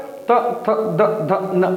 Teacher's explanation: बोल के देखो, जीभ आपके दांतों से टकराएगी। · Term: त वर्ग